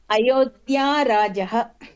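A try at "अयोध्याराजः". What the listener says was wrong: Dirgha Akara should be kept. Ayodhya Raja.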